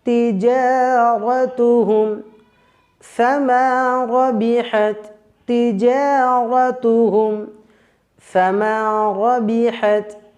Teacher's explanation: ধরনের তা যার মাখরাজ আর সেফাত একই উচ্চারণ স্থল একই এইজন্যে এই প্রথম তা টাকে আমরা দ্বিতীয় তা এর সঙ্গে যুক্ত করে মিলিয়ে আমরা পড়বো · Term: ইদগামে মিসলাইন